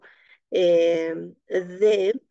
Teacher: el ápice de la lengua sale entre los dientes y se produce este fonema D